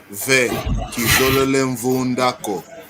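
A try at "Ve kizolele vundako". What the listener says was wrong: Kizolele vunda, cuidado, não há M inicial, não há nasal inicial.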